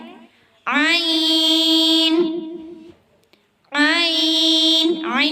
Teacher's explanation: عین یہ وسط حلق سے ادا ہوتا ہے